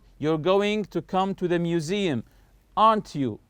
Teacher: your voice goes up when we check information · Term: Rising intonation